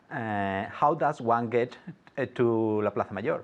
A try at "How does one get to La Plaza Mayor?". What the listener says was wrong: Perfect, good.